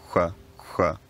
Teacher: ch becomes labialized ch, so it's ch but pronounced with the lips rounded, ch, ch. Then this labial characteristic becomes the dominant part of the sound and people just stop using the tongue to articulate the sound and just use the lips instead.